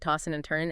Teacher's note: Tossing and turning, you often drop the G sound, right? Tossing and turning, and the D and N might blend. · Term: G dropping